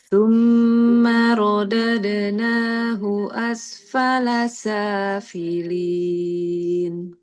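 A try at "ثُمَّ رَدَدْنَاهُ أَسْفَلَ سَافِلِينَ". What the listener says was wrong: Coba tebalkan sedikit aja roknya. Tsumma radadnahu Ro itu seperti kita bilang R biasa. Coba dirasa-rasa R. Ya, ujung lidah ke langit-langit depan. Apa yang membuat dia tebal? Belakang lidah naik.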